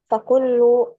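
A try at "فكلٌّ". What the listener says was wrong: Kullun ditanwin. Fakullun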